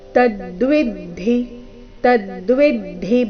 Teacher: ತದ್ವಿದ್ದಿ ಶಬ್ದದಲ್ಲಿ ಮೊದಲನೇ ಎರಡನೇ ಅಕ್ಷರಗಳ ಮೇಲೆ ಆಘಾತ